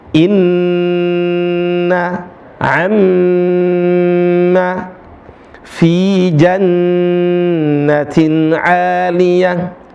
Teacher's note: Maka ketika ada nun sama mim ditahan dua harakat. · Semua huruf yang bertasydid tidak boleh dibaca panjang kecuali huruf nun dan mim. Maka ketika ada nun sama mim ditahan 2 harakat.